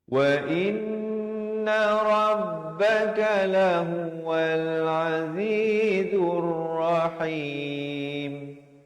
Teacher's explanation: Zai bari dhammah bertemu ra di sini alif lam syamsiah. Lamnya tidak dibunyikan.